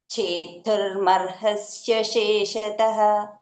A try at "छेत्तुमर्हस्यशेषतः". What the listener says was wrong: చేతుర్ లేదు, చేత్తు. చేత్తుమర్హస్య.